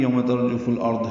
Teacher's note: سورۃ النازعات میں بھی یوم ترجف الارض ہے، یوم واولین ہے، ہونٹوں کی نا تمام گلائی سے ادا کریں گے. ترجف میں را پر پڑھیں گے، فاق والا ارتھ کے لام سے ملا دیں گے، اظہار قمری ہوگا.